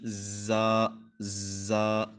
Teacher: اوپر والے اور نیچے والے دانت مل جائیں گے، ان کے کناروں پہ زبان لگے گی